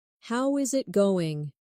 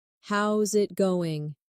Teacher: Instead, "How is it going?" becomes "How's it goin'?" The is disappears, and the final G in going often softens. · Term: connected speech